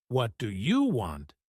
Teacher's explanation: But if you stress you, like, What do you want? It can sound rude or aggressive.